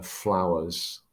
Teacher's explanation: the verb and then flowers again we've got a reduction here we've got a reduction of a consonant cluster fl is not necessarily so easy for a five-year-old to say so it's been reduced so flowers like that and when we